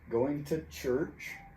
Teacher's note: two is reduced to ta